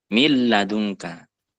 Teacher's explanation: tidak perlu digunahkan karena otomatis Nun sudah masuk ke huruf berikutnya